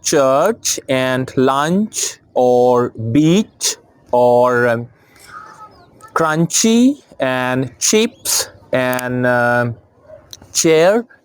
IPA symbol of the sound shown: tʃ